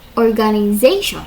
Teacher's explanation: [Applause] um with stress on the second syllable even giving its vowel the American ae sound instead of listed pronunciation organization with primary stress on the fourth syllable secondary stress on the first and a weak vowel for the second syllable which may even be omitted.